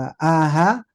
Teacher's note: pertama adalah e tenggorokan bagian bawah